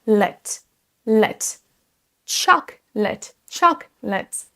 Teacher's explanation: La deuxième chose, ça va être qu'il faut accentuer la première syllabe, chocolate, chocolate. Et vous entendez la prononciation de la deuxième syllabe, on ne dit pas late, mais let